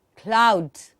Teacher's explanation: cloud with the expulsion of air at the end